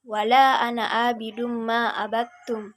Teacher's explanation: Kemudian huruf idgham bigunnahnya ditasyidkan, ditahan kira-kira 2 ketukan, dan disertai dengan sengau.